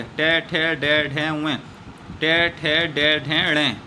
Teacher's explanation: ट वर्ग हमारा बोला जाता है मूर्धन्य से